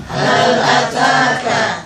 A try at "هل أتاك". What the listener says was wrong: Ya, kafnya juga. Jadi bukan huruf K-nya kita sehari-hari berbicara ya, tapi kafnya ya. Kaf sebagaimana mestinya terkait dengan sifat huruf harus desis.